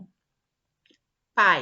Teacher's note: uma vogal e uma semivogal são pronunciadas em uma única sílaba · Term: ditongo